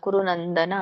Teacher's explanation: ಕುರುನಂದನ ಅಷ್ಟೇ ಇದೆ ಅಲ್ಲಿ ವಿಸರ್ಗ ಇಲ್ಲ